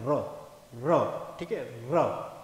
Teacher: गोल बेलन के आकार में जीभ घूम के बाहर आती, नीचे आती है, तो उससे उच्चारण होकर के निकलता है र। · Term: लुंठित व्यंजन